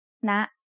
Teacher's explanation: High tone starts at a high pitch and rises very slightly.